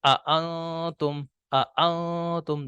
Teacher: دونوں حمزوں میں ہم جھٹکے سے پڑھ رہے ہیں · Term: حمزہ